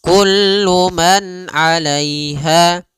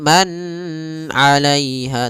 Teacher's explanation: suara nunnya dibaca dengan jelas ketika bertemu dengan huruf ain maka kita namakan dengan bacaan izhar ya izhar halqi.